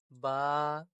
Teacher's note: دونوں ہونٹوں سے آواز نکل رہی ہے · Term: حروف شفوی